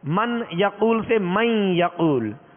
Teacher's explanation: ناک میں آواز ایک الف کی مقدار میں ٹھہرتی ہے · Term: غنہ